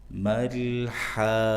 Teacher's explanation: Lam sukunnya izhar, jangan mantul, jangan tawallud.